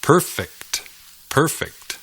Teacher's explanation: El énfasis cae en la primera sílaba.